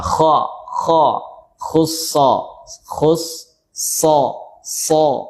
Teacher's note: Istila mengangkatnya diucapkan dengan tafkhim tebal. Kemudian mengangkatnya pangkal lisan · diucapkan dengan tafkhim tebal, kemudian mengangkatnya pangkal lisan, ya, kha khussa so mengangkat, bo kemudian gha terangkat, to kemudian ko kemudian lo, ya, terangkat pangkal lisannya, isti'la.